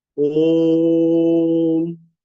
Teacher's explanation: ओ को तीन गुनी शक्ति से तीन गुनी लंबाई तक बोले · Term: प्लुत